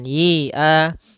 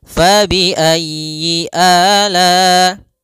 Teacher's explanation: Kemudian y-nya pendek, jangan dipanjang, jangan yi-a, tapi langsung saja fabi'ayyi ala.